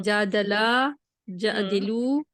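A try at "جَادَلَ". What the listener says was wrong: नहीं, जादी नहीं है, जा द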